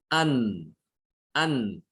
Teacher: kalau nun berarti makhrajnya ada di ujung lidah, ditempelkan dengan langit-langit mulut, ya, di bawahnya makhraj lam. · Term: idhar